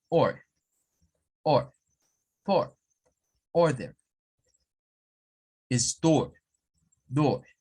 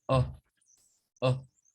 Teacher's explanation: Ahora, los británicos vienen y a esas palabras les quitan el sonido de la letra R. Por ejemplo, para decir or, que es como decir o, vean, es el artículo o del inglés, ellos nada más dicen oh, oh, como que fuera una oh.